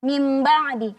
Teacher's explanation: nunnya ini kita ganti menjadi mim seolah-olah dia mim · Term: iqlab